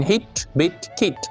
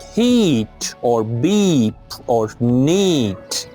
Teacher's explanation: the short vowel is produced shortly, E as in hit, bit, kit, and the long vowel is produced a little longer, like heat or beep or neat